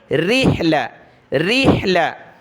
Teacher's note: را کے نیچے زیر ہے تو باریک پڑھنا ہے پتلا را کو